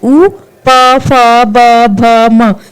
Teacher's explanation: होट से उच्चारित होते हैं उ प फ ब भ म ये सब ओ से उच्चारित होते हैं मतलब होठों से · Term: ओष्ठ्य वर्ण